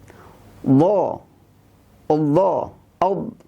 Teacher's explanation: Huruf dha. Huruf dha ini keluar dari 2 sisi lidah, atau salah satunya bertemu dengan gigi geraham.